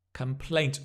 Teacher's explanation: Notice the stress on the plaint.